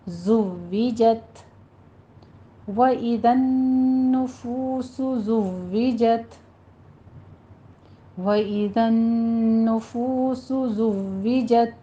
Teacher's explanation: ज़ुव्विजत, ज़ाई की आवाज़ सीटी की आएगी और कवी आवाज़ के साथ पढ़ना है। आगे वाव के ऊपर तशदीद अदा करते हुए कसरा की आवाज़ बारीक करें